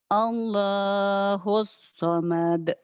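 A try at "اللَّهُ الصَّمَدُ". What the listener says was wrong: Pendek. Pendek harus pendek.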